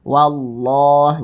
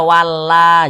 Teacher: lafaz Allah yang sebelumnya adalah tanda baca fathah sehingga lafaz Allah kita baca tebal sehingga kita baca wallah Jangan dibaca Wa jangan tapi lafaz Allahnya · Kalau ada lafaz Allah sebelumnya ada huruf yang memiliki tanda baca fathah atau tanda baca dhammah, maka lafaz Allah dibaca tebal, dibaca tafkhim. Nah, di sini yang kita temui adalah lafaz Allah yang sebelumnya adalah tanda baca fathah, sehingga lafaz Allah kita baca tebal.